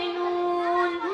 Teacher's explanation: নুনের মাখরাজ জিহবার শেষ দাঁত দুই পাশে দুই কিনারায় সামনে উপরে দাঁতের মাড়ির সাথে লাগিয়ে বলতে হবে নুন